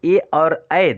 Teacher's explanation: हम गले और तालू के माध्यम से 'ई' और 'ऐ' ध्वनियों का उच्चारण करते हैं।